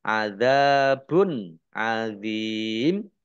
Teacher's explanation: Domah tanwin bertemu dengan huruf ain bacaan idhar dibaca jelas.